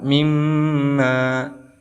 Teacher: Maka di sini dia hukumi sebagai idgham bi gunnah. Cara membacanya yaitu didengungkan 2 harokat